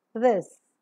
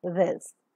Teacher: the nasal passage of air both the teeth come closer and the tip of the tongue makes a light contact with the upper teeth and leaves a narrow space in between through which the air that is coming out from the lungs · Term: fricative